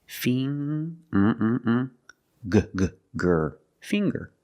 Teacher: we see the nasal sound plus the hard G